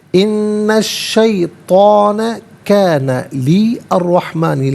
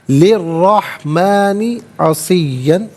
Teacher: را پر زبر ہے، را کو پر کر کے پڑھا جائے گا